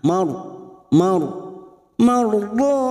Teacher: ro kita baca tafkim karena sebelumnya ada fathah.